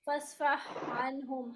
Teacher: हा और आइन दोनों ही वस्ते हलक से निकलते हैं